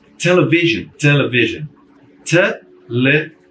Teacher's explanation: Você retira dali a sílaba tônica, o que sobra é o schwa